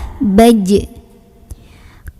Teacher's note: Kalau dalam keadaan sukun, jimnya jangan lupa pantulkan, punya sifat namanya qalqalah